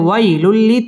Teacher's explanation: তানবিনের বামে লাম আসছে, লাম ইদগামে বেলা গুন্নার হরফ, গুন্না ছাড়া মিলিয়ে পড়তে হবে